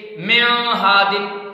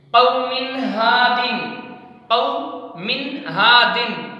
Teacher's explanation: کو ظاہر کر کے پڑھیں گے، یعنی صاف کر کے پڑھیں گے، غنہ کے ساتھ نہیں پڑھیں گے